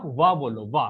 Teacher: जब आप वाह बोल रहे हो तो दांत और होठों का सहारा लेना पड़ रहा है। स्पेशली जो ऊपर का दांत है और जो नीचे का होंठ है, उन दोनों का आप जब सहारा ले रहे हो तब आप वाह बोल रहे हो, वाह। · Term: दंत ओष्ठ ध्वनि